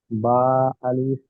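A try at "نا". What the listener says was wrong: জি না, বা হলে নক্তাটা নিচে থাকতো, উপরে নক্তা আছে তো ওটা কি বলবেন? উপরে একটি নক্তা থাকলে বলবেন নুন। আলিফ।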